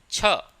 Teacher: जो च वर्ग व्यंजन होते हैं उनका उच्चारण तालु से होता है